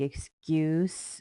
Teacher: we have the S sound, which is kind of pronounced like the Z sound